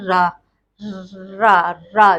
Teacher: Next हमारा आता है रा। रा, रा, जब हम रा का उच्चारण करते हैं तो हमारी जीभ जो है बेलनाकार में अंदर की ओर मुड़ जाती है। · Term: लुंठित व्यंजन